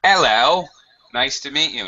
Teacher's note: Yeah, you never hear this on BBC or something because they have a very neutral British accent, but in a stronger accent, like a Cockney accent, notably, right? You wouldn't hear the H.